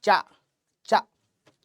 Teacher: चा वर्ग जो है वो दांत से नहीं निकलता है, तालु से निकलता है।